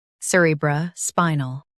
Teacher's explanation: Emphasize spy and keep nul light.